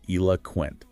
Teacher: The key is that the middle o is almost silent. It's a schwa sound.